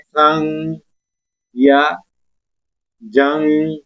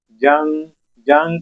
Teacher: जिस तरह हम पढ़ रहे हैं, जिस तरह लफ्ज है उर्दू में हम पढ़ते हैं संग या जंग, नाक में आवाज गई है इस नून की, जंग जंग कहेंगे तो देखे ना, तो ये नून हमारी नाक के अंदर चढ़ा है। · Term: इख्फा